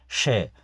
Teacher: ये श तालु से उच्चरित किया जाएगा, तालव्य ध्वनि के नाम से जाना जाएगा